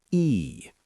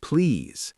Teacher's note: Your cheeks should lift. Your tongue is high in your mouth. It's a long stretched sound. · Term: long e